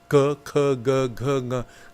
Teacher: The first set you did by placing your tongue pushing at the back of the throat. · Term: guttural sounds